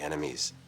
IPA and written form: ˈɛn ə mi (ENEMIES)